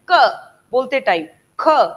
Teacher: प्राणवायु गले के ऊपर ज्यादा दबाव दे रही है, वो साउंड वहां से क्रिएट हो रही है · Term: कंठ